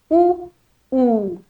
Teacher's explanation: प्रत्येक वेळेस बघा माझा ओठांचा चंबू होतो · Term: ओष्य वर्ण, ओष्ठ्यवर्ण